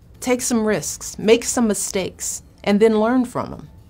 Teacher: the intonation goes up on the first thing in the list up on the second thing in the list and down on the last thing in the list · this falling intonation says to your listener hey this is the end of my list